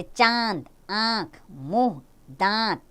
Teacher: जिस वर्ण के उच्चारण में कुछ वायु नाक और कुछ मुंह से निकले उसे अनुनासिक कहते हैं।